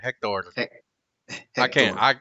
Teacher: You got to say it with a little R, roll of the R at the end